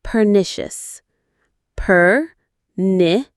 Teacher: Stress on the second syllable, ni.